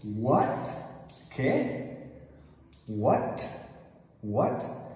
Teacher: Quando tem uma palavra só e essa T fica no final de palavra, é como em French. É T completo. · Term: top T